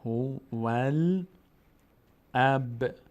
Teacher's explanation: الف در هنگام وصل میفته، نخونده نمیشه